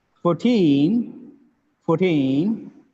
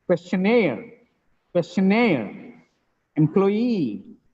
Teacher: the second syllable is stressed that means the last syllable stress not second last syllable stress